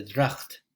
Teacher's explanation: when we have a GH, like in this word drought, there's this kind of glottal in the back of your throat